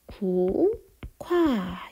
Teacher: 국화 이렇게 발음이 납니다. 자, 얘는 기역과 히읗이 합쳐져서 키읔으로 바뀐 거죠. 그래서 이런 경우에는 자음의 축약이 일어났다라고 볼 수 있는 거예요. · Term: 거센소리 대기